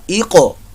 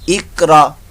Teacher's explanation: اس قاف کے اندر جو ہے وہ قلقلہ ہوگا، قاف ساکن قلقلہ۔ ایقو، اقرا، یہ نہیں اقرا، ایسے نہیں، ایقو، اور قاف پر موٹا بھی پڑا جائے گا، حروف مستعلیہ میں سے ہے۔